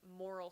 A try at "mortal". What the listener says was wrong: Mortal. mortal. You said moral. It's mortal.